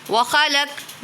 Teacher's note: خوا کو پر پڑھیں گے کیونکہ حرف مستعلیہ میں سے ہے، قوف کو بھی پر پڑھیں گے۔